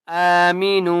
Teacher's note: نو حمزہ کو ایک الف کی مقدار کھینچ کر پڑھیں گے نون واو پیش نو واو مدہ ہے نون کو ایک الف کی مقدار کھینچ کر پڑھیں گے